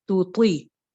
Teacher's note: تا باریک حرف ہے، جبکہ تو جو ہے یہ موٹا حرف ہے